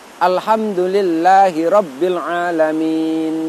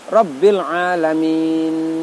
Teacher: Sisakan sedikit dengung pada huruf nun. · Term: berdengung